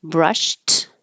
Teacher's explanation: brushed by itself would sound like a T, brushed. And we can get rid of the H in her and now connect it, and it sounds like brushed her.